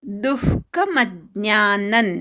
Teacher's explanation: दुच्या विसर्गाचा अर्धा विसर्ग उच्चार ऐकू येऊ दे